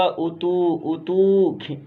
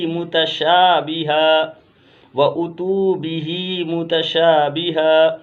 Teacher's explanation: و اتو کھینچیں گے، واو مدہ ہے